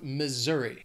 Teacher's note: is on that second syllable Missouri Missouri that s is going to have more of that z sound · That S is gonna have more of that Z sound.